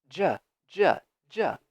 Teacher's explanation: Both are happening with your tongue touching that slope, that upward move in your mouth, and going ch or j.